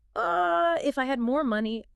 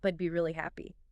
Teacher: You'll often find an upward tone in the first clause, signaling more info is coming, than a downward tone in the second, indicating completion.